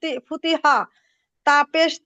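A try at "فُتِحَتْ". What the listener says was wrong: ফুতিহাতি টান হবে না। আপু মস্ক করবেন, আপনার হচ্ছে আপনি হরকতের উচ্চারণটা করতে পারেন, যেমন জবর জের পেশের হরকতের সাথে হরফের সাথে উচ্চারণ করতে পারেন, কিন্তু যখন এমনিতেও করেন, উম মিলিত উচ্চারণ করেন, তখন আপনার হরফের উচ্চারণটা পারফেক্ট উচ্চারণটা আসে না।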